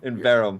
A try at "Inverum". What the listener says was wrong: There's no N in there. There's an N in there.